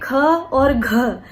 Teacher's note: लेकिन इससे उलट जिन व्यंजनों के उच्चारण में निश्वास वायु का अधिक प्रयोग किया जाता है, जैसे कि जो प्रत्येक वर्ग है उसका दूसरा और चौथा, जैसे कि क वर्ग की बात करें ख और घ, क्योंकि उनके उच्चारण में जो निश्वास है उसमें अधिक वायु का प्रयोग किया जा रहा है, तो ये महाप्राण व्यंजन कहलाते हैं।